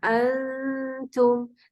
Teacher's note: نون کا صرف غنہ ادا ہوگا اور مخرج اگلے حرف کا لیا جائے گا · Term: اخفا حقیقی